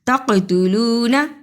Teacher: قاف پہ قلقلہ کیا، نون کو جلدی پڑھا